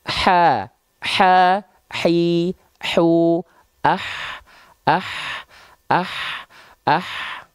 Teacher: H kecil itu dia dilafalkan dari bagian tengah tenggorokan kita